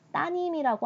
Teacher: 발음이 불편하기 때문에 리을을 빼고 따님이라고 한 거야. 그래서 리을이 사라졌다.